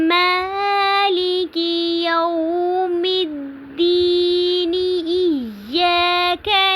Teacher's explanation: जब मिला के पढ़ा तो दीनी पढ़ा, क्योंकि नून को हमने साकिन नहीं किया। इसलिए साकिन नहीं किया क्योंकि हमने यहाँ पे वक्फ़ नहीं किया।